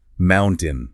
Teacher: The vocal cords simply slam shut after the end, stopping the air and then release for the final syllable. Mountain. >> And until your ear can actually hear that gap, your throat will never know it needs to close. · Notice how there is no T sound at all. The tongue doesn't tap the roof of the mouth. >> It just stays down.